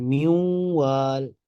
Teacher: جیسے مثلا میو وال، نون ساکن ہے تو آگے واؤ آ رہا ہے، تو غنے کے ساتھ ہم ادا کریں گے میو وال، ہے ادغام کہ نون کو واؤ کے ساتھ ہم ملا کر ایک مشدد حرف بنا رہے ہیں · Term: ادغام بالغنہ